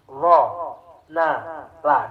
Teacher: ujung lidah yang bersentuhan dengan langit tengah